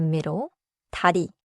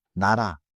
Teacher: 디귿 and 니은 both touch the front, but 디귿 releases as a stop, and 니은 keeps the nose sound flowing.